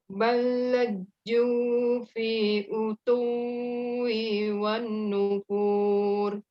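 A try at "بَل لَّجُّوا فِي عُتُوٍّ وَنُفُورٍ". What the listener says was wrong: Kebalik. Auto tanpa ditahan. Nempel saja. Ditahannya di ditahan. Balaju fi utuwi.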